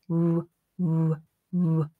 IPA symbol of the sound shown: w